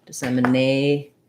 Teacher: my tion ending is just my sh sound with a syllabic n so very little vowel there at all